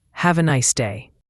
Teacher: The nice ends with a clear S sound, not a Z, and day has that long A sound, like in play.